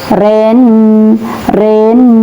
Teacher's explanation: Nah, di sini dengung ya, Ren rin. Karena ada nun ber tasdid, maka cara bacanya dengung atau ghunah.